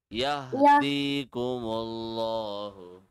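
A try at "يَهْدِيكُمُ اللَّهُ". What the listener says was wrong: Yahdikumullahu. Stretch the D, come on. Yahdikumullahu.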